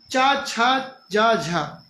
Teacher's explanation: संघर्षी व्यंजन बोलते हैं क्योंकि इनके उच्चारण में भी संघर्ष होता है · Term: स्पर्श संघर्षी